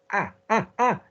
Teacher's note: there's got to be some nose in your ah